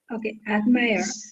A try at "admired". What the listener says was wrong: Admired. Remember, there is D and D is there. Remember, when it becomes past tense, the D sounds like admired. No, this D is D.